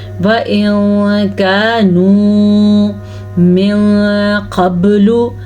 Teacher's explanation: नून साकिन के बाद काफ आने की वजह से यहाँ पे इख्फा का कायदा होगा। व इन कानू मिन क़ब्लु, बारीक काफ आ जाए या मोटा कौफ आ जाए, दोनों का यही कानून है।